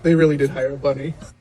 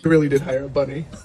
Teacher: He said the word bunny stressed on the second syllable. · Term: sentence stress